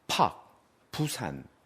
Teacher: 우리가 부산 이렇게 발음할 때 부 이럴 때 손등에 바람이 푹 하고 나갑니다. · 팍 이렇게 발음이 날 때 그것은 엄밀하게 따져서 무성 음입니다